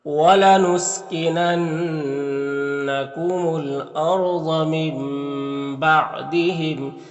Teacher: یہاں پر نون ساکن کے بعد با ہے تو نون کو اس میم سے بدل کر غنہ اور اخفا کے ساتھ میں پڑھیں گے، اس کو اقلاب کہتے ہیں، اس طرح سے۔